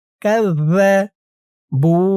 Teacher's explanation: জালের উচ্চারণ একদম নরম হবে জিহ্বার মাথা উপরের দাঁতের মাথার সাথে লাগবে